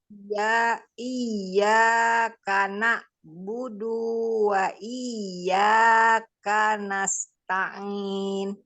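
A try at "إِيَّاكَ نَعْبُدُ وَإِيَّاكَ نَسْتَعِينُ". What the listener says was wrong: Hati-hati, tidak mat, jadi tidak boleh panjang.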